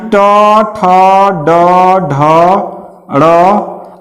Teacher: ऐसे व्यंजन वर्ण जो मूर्धा को झटके के साथ स्पर्श करके वापस चले आते हैं · ये आपका हो जाएगा उक्षिप्त व्यंजन वर्ण। ये मूर्धा को स्पर्श करता है, लेकिन क्या करता है? बहुत झटके के साथ स्पर्श करेगा फिर वापस आ जाएगा